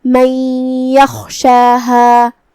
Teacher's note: من یخشاہا، یہاں نون ساکن ہے، پھر حرف الیا ہے، یا حروف الادغام بغنہ میں سے ہے، اور ادغام کا معنی ہے حرف کو حرف میں داخل کرنا، تو ہم یہ نون کو یا میں ملا کے غنہ اور تشدید کے ساتھ یہ حکم کو ادا کریں گے